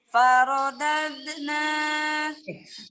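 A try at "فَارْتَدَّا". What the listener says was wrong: Dari dal sukun Kan ada qalqalah. Harus sambung suaranya dengan huruf nun.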